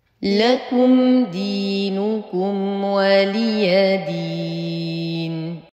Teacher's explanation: اقول ولي وانما ولي دون تمطيط للحروف دين نتم كسره الدال نعطي النون زمن البينيه ونقف بالمد العارض للسكون